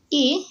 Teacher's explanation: मतलब कंठ और तालव्य दोनों से मिलकर बोला जाता है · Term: कंठ तालव्य